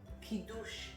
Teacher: Emphasizing the last syllable in the word.